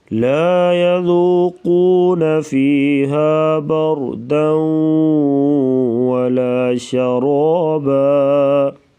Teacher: لا يذوقون قاف کو پر پڑھیں گے موٹا، بر را ساکن سے پہلے زبر تو را کو پر پڑھیں گے موٹا